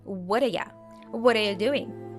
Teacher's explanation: we shorten you to Y and link all words together